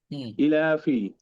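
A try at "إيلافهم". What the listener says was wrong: ই টান দেন ইলাফি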